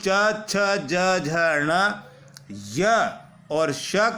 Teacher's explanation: तालू से उच्चारित हो रहे हैं इसलिए इनको तालव्य कहते हैं इन वर्णों के उच्चारण में जीहा मुख के ऊपरी चिकने भाग तालू को स्पर्श करती है